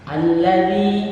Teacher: zalnya dibaca tipis dan dibaca panjang 2 harakat